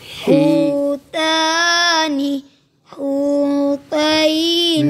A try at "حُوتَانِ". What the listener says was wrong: حوتا باریک پڑھنی. تو موٹا کیوں کر دی؟ حوتانی، حوتینی.